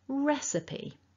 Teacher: stressing the first syllable and remembering your E at the end.